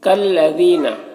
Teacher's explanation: یہاں پر لام مشدد حرف ہے تو پیچھے والے متحرک حرف کاف سے مل کر پڑھا جائے گا۔ یہ الف کو نہیں پڑھیں گے کیونکہ مشدد حرف جو ہے کسی بھی متحرک حرف سے مل کر پڑھا جاتا ہے، یعنی اسی حرف سے جس پر زبر ہو، زیر ہو، پیش ہو، اس سے مل کر پڑھا جاتا ہے۔